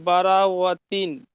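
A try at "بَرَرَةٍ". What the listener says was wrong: বারো ওয়াতিন কেন? মুখে পড়ছেন, বানান করছেন র, আর পড়ার সময় ওয়াও কেন বলছেন? কিরামিম বারো রতিন, রতিন, ভালো করে দেখেন, বারো ওয়াতিন নয়, বারো রতিন।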